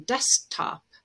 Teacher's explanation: with the t after in desktop we might drop the k